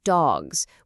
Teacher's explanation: dogs with more of a buzzing z sound.